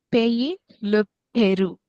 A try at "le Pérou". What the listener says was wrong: Pérou, très bien.